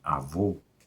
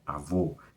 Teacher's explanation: quando o som de uma palavra é fechado, como em avô, esse o é fechado, né? Avô, eu marco ele com acento circunflexo.